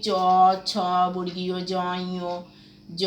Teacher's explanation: এই বর্ণগুলোর উচ্চারণ স্থান হচ্ছে তালু। এগুলো বলা হয়, এই বর্ণগুলোকে বলা হয় তালব্য বর্ণ।